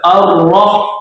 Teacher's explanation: Ar-Rahmanir-Rahim, huruf ra dibaca tafkhim, tebal. Ar-Rah. Tapi tidak boleh melebihi dari suara tasydidnya.